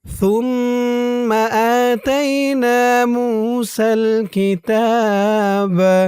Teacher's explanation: সুম্মা সা দিয়ে মিম ধরবে, এখানে ওয়াজিব গুন্নাহ, কারণ হরকতের পরে মিমের উপর তাসদীদ। সুম্মা সার উচ্চারণটা একদম নরম হবে, জিহ্বার মাথা উপরের দাঁতের মাথার সাথে লাগবে সার উচ্চারণটা করার সময়।